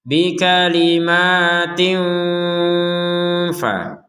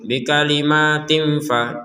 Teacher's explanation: Ada di sini tanwin bertemu fa, maka kita membacanya dengan samar. Nah, sebagaimana disebutkan sebelumnya, samar ada dengung sedikit.